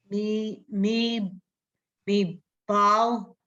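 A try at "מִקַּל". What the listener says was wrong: No, that's not a bet. There's no tail on there. Kal. That's a cuff. Me kal.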